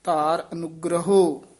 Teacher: ਹ ਔਂਕੜ ਆਉਂਦਾ ਇਥੇ ਹੋੜਾ ਦੀਰਗ ਉਚਾਰਨ ਕਰਨਾ